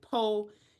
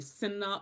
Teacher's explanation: Instead of sinner, so the sinna, all of the final R sounds will be dropped